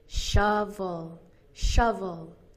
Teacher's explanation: And actually the word shovel has both of the phonemes, both of these sounds, the stressed sound and the unstressed vowel, the schwa